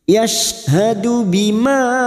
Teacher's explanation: Ma ada mat yang bertemu dengan hamzah di lain kalimat, mad jaiz munfasil. Mad jaiz munfasil kita panjangkan 4 atau 5 harokat.